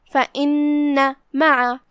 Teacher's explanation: حرف النون ہے اور اس پہ تشدید ہے، لہذا 2 حرف کے مقدار میں نون کو ادا کرنا ہے